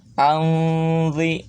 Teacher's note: Anzil qarnain, nah, ketika mengucapkan nah, harus tempelkan ujung gigi atas ke ujung lidah ya. Anzi, jadi samar nanti nun sukunnya tidak n, akan suaranya akan antara n dengan eng